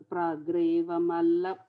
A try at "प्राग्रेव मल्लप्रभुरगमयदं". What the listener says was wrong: No, you are saying pragreva. Prageva